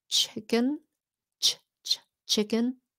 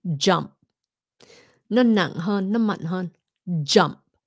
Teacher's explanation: when you go into a g sound or a j sound then you use more of your voice okay it goes from chicken chicken to jump on jump okay